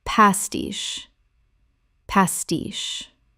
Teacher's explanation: 2 syllables with the stress on the second. The che makes a sh sound.